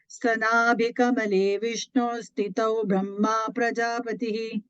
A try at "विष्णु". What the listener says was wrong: Vishnu, I heard a Vishnur. There's no ir there. இல்ல அங்க Vishnu Karna அப்படிதான் இருக்கு. Do you have a visarga there? Vishnu Karna.